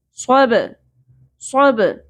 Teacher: صوت کو پر پڑھیں گے، حروف مستعلیہ میں سے ہے، با ساکن کے اوپر قلقلہ ہوگا. فن صوب نہیں پڑھنا.